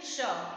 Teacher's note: ये जो तालु है इसके पीछे, ठीक है, बोलकर देखिए श, जीभ हमारी ऊपर की ओर मुड़ रही है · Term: मूर्धन्य स